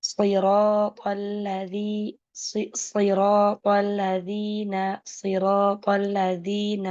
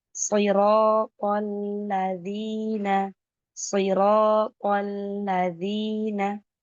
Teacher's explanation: Langsung masuk ke alladzina maka ada tasdid di situ. Sempurnakan tasdidnya jangan sampai lepas. Kalau lepas nanti akan hilang ini satu huruf.